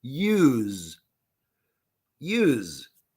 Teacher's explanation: I know it's spelled with S. It is spelled with S. We pronounce Z.